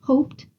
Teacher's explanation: after unvoiced consonants such as the word hoped Ed is frequently pronounced as T